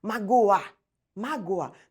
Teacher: o meu o está muito pronunciado e se ele estiver pronunciado Deixa de ser semi para ser vogal